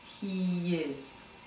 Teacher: a Y sound that you would find in between words like he is